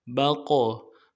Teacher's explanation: کریں گے، میم بقلها با کو قاف کے ساتھ ملانا ہے، قاف کو موٹا کریں گے، قاف ساکن ہے ہونے کی وجہ سے قلقلہ ہوگا،